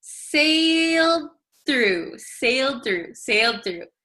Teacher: sailed through it's very difficult to say sailed through right so this D sometimes disappears if we say it very quickly